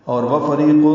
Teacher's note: را باریک ہے، ری یا مدہ ہے